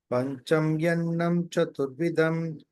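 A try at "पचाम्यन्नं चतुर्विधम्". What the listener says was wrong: Pacha. It's Pacha, not Pancha. Pachamyannam Chaturvidham.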